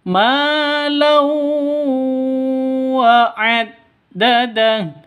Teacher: Lau tanwin bertemu dengan wawu. Jadi cara bacanya masuk ke wawu disertai dengung dua ketukan. Kenapa? Karena ini bacaan idgham bi gunnah.